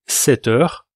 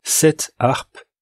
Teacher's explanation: Comparez cette heure avec la liaison et cette harpe sans liaison